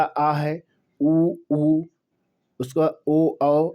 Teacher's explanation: जिसके उच्चारण में जीभ का पिछला भाग ऊपर उठता है। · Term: पश्च